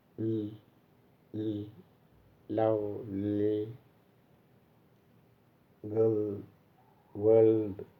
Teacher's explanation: For its protection, the tip of the tongue is raised to the alveolar ridge. The air is blocked at the center and through the sides of the tongue, air is allowed to pass through, and the sound is l, l, lovely, girl, world, like that. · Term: lateral